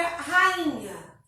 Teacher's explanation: nesse caso, a gente tem um hiato. O i se separa do a, beleza? Então, a gente não vai separar os hiatos, que são duas vogais que pertencem a sílabas diferentes.